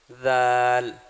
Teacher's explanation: دال میں کسی قسم کا کوئی سٹی نہیں ہے